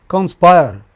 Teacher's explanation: Conspire, two syllables only. Stress on the final.